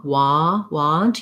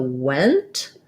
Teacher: your mouth is more open and the vowel is further back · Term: ah